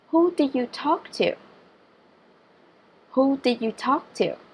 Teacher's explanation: đối với câu hỏi WH questions, các em lưu ý là ngữ điệu chúng ta sẽ đi xuống ở cuối câu nhé